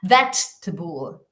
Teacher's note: Veg, la sílaba tónica, y el resto, fijaos, schwas.